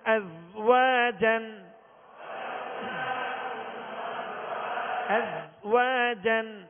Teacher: زا کو سختی سے پڑھیں گے لیکن اس میں قلقلہ بھی نہیں ہوگا اس سکون میں